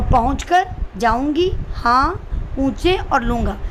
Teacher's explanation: आप बोल के देखेंगे तो आपका नाक और मुंह दोनों इस्तेमाल हो रहा है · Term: अनुनासिक